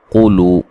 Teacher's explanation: قاف کو موٹا ادا کریں گے، لو و مدہ ہے